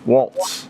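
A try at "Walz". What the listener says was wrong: No T, just Walls.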